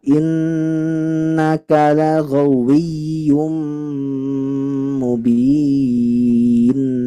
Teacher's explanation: nun yang bertasydid ditekan membacanya Bu, dengungnya yang lama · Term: Nun yang bertasdid